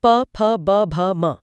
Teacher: इसमें दोनों होठ एक दूसरे को छूते हैं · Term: प वर्ग